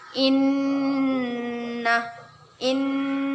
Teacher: Nun bertasydid gunnah kita dengungkan dan kita tahan dua harokat